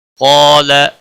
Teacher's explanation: قاف اور الف دونوں موٹے پڑھے جائیں گے ، قاف حروف مستعلیہ میں سے ہے پر پڑھا جائے گا،